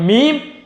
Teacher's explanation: दोनों होठों के खुश्क सूखे हिस्से से अदा होता है मीम